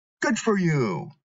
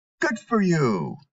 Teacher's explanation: if you're responding to someone's good news you start with high intonation and then it drops off or Falls at the end of the sentence